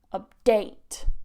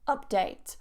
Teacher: So the stress goes on that second syllable, to update. If you put it on the first syllable, update, it becomes a noun.